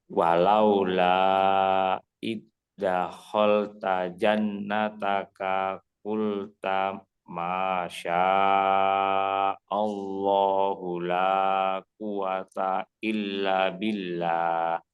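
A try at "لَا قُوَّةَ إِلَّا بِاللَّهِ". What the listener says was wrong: Quwwata illa panjang ya. Illanya tadi kurang panjang.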